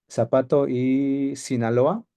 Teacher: en español eh la s y la z son lo mismo